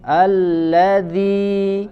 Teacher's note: ujung lidah bertemu dengan ujung gigi seri bagian atas